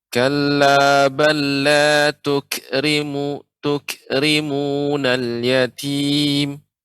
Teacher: kafnya ketika kaf sukun lebih ditampakkan sifatnya, hamusnya